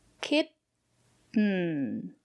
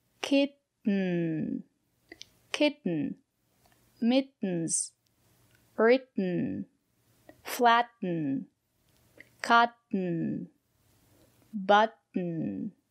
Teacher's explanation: we pronounce the letter T as a stop T. Put your tongue up and stop the air. Don't release the air. Stop the air.